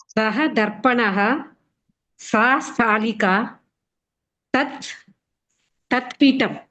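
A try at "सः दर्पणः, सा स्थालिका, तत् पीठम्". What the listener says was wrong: ఉత్తమం మహోదయ, ఉత్తమం.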